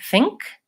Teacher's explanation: In the word think, even though it's spelled with NK, it actually has that NG sound.